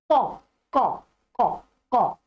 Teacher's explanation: कहते हैं जो जिह्वा का नीचे का भाग होता है वहां को, जो वो भाग है वो कंठ भाग से टच होना चाहिए, उधर की तरफ खींचना चाहिए। और इनके उच्चारण में जिह्वा का आगे का भाग अधिक मूवमेंट नहीं करता, इनका जो जड़ का भाग है जिह्वा का वो करता है